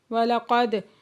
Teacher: دال ساکن ہے یہاں پہ قلقلہ ہو رہا ہے